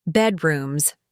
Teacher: The word bedrooms has stress on the first syllable. Bedrooms, not bedrooms.